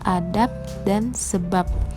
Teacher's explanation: fonem B pada silaba akhir kata adab dan sebab diucapkan P, adab dan sebab, yang persis sama dengan pengucapan fonem P pada atap dan usap. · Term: dinetralisasi, netralisasi